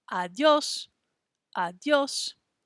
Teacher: hear how i'm saying the o s part a little bit louder than the beginning part of the word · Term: stress